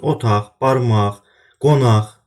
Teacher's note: Sonu q ilə bitən milli mənşəli sözlərdə söz əgər müstəqil şəkildə işlənirsə, o halda səsi, q səsi x kimi tələffüz olunur.